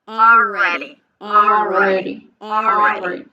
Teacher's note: I'm saying it with the intention of pronouncing the R correctly, rounding the lips, making sure the tip of the tongue doesn't touch anything